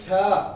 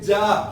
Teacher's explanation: जीभ आपकी तलुए पे आएगी, जीभ आपकी आगे आएगी। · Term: तालव्य